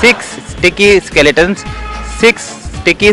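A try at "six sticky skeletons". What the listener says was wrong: रुक के बोल रहे हैं सर, तेज बोलना। सिक्स स्टिकी स्केलेटन्स, ऐसे।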